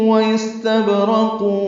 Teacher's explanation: استبرق میں سین ساکن پہ ہمس، با ساکن پہ قلقلہ، اور قاف ساکن وقفن، قاف ساکن پہ بھی قلقلہ.